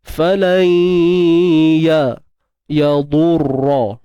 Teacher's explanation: Kadar dengung 2 harakat macam biasa. Dan pastikan suara tu sampai ke hidung lah. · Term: idgham bi gunnah naqis